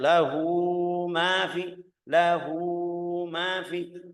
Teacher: Ini yang namanya mad tabi'i atau panjangnya dua harakat. Kalau kita lihat ke belakangnya setelah hamzah, setelah ha'ul dhamir tidak ada hamzah, tidak ada sukun.